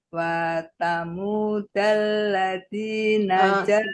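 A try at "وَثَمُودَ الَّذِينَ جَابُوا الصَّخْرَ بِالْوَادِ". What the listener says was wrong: Wanya pendek, janya panjang. Wasamudalladzina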